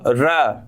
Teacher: நாவின் நுனி மேல் அன்னத்தின் மையப்பகுதியை உரசுவதால் எந்த எழுத்து தோன்றும்னா ரகரம் தான் தோன்றும் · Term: இடையின ரகரம்